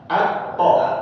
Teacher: ujung lidah menempel dengan pangkal gigi seri atas